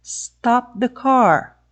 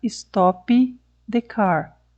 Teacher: Eu obedeci as 2 fases da produção do stop, que foi o bloqueio da passagem de ar e o aumento da pressão do ar dentro da boca. Mas não houve a liberação do som.